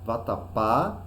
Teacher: nós percebemos que as últimas sílabas receberam maior intensidade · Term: oxítonas